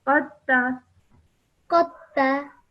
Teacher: you straight away join the qaf to the ta and ignore the sound of the dal.